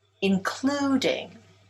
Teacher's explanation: Including is stressed on the second syllable.